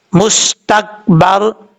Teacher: را ساکن سے پہلے زبر ہے با کے اوپر، اس لیے اس کو بھاری ساؤنڈ کے ساتھ پڑھیں گے، یعنی پر پڑھیں گے.